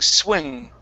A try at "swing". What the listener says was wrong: it is swee, swing. Okay, you need a long E sound there, okay?